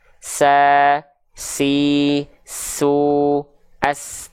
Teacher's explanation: Huruf sin juga punya sifat hams. Tapi sifat hamsnya hanya berupa mengalir nafas. Tidak percikan.